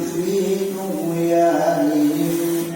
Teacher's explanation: tugyani jangan dikasih tebal karena dia bukan qalqalah, bukan huruf qalqalah.